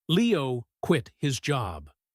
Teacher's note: He puts the stress on the word quit. "Leo quit his job." That tells you that quitting is the new shocking information.